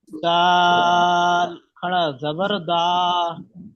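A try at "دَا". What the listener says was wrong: মাশাআল্লাহ, খুব সুন্দর পড়েছেন জি, সুন্দর পড়া হয়েছে।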